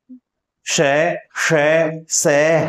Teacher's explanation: इनके उच्चारण में श्वास वायु घर्षण के साथ बाहर निकलती है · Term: संघर्षी